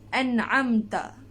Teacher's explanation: Dia jangan dengungkan huruf nun tu. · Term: izhar halqi